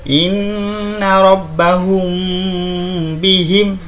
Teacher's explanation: Nah, jadi ini harus disamarkan, mimnya disamarkan ke ba, ditahan.